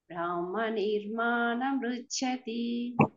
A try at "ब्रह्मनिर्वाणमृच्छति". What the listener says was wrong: బ్రాహ్మ కాదు బ్రహ్మ నిర్వాణ.